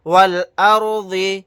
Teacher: یہاں پر تو ضاد کو ساکن بنا کر پڑھیں گے، اور سانس نہیں توڑیں گے تو ضاد کے نیچے زیر لگا کر پڑھیں گے